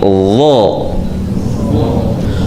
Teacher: Konsekuensi dari huruf yang kuat atau tebal, udara yang keluar sedikit. Kemudian pangkal lidah belakang naik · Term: huruf dha